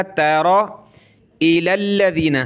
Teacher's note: را کو موٹا کریں گے، تا کو پتلا